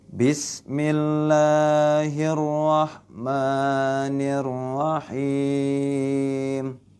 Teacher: Bismillah ya, millah adalah lam tipis. Kemudian la-nya dibaca panjang 2 harokat, hukumnya adalah mad tabi'i.